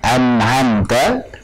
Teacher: Yang betul adalah tanpa gunnah yang dipanjangkan atau tanpa tambahan dari pokok gunnah. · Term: izhar halqi